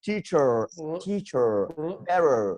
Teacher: I think you pronounce R just like deep R in your throat.